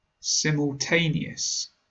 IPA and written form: ˌsɪm.əlˈteɪ.ni.əs (Simultaneous)